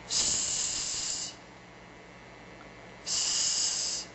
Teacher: That's unvoiced and fermata.